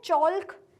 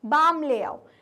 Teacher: इसमें हमारा जो एल का प्रोनाउंसिएशन है वो साइलेंट है